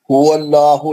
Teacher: लाम जलाला मोटा पढ़ेंगे